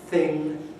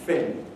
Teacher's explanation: One very well-known one is what we call TH fronting, whereby the dental fricatives are replaced by labiodentals. So instead of thing, we can get fin, something.